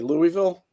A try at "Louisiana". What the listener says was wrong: Yeah, well, you left an I out. It's Louisiana. Louisiana.